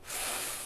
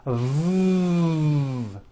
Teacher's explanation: the F sound is unvoiced and sounds like this and the V sound is voiced and sounds like this V correctly pronouncing these sounds will make